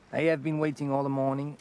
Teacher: French people tend to not pronounce an H. Instead of saying I have been, he goes I have, which is good.